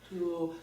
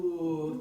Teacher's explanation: the tongue is high in the back, but for me it feels like it feels very sort of tactile in the front, like everything is happening in the front. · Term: ooh vowel